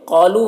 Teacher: قاف کو پر پڑھیں گے، قاف حروف مستعلیہ میں سے ہے۔